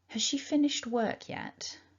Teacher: you heard the sound hus with the schwa there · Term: weak form